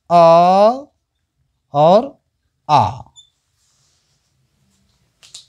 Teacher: अ और आ का उच्चारण स्थान है कंठ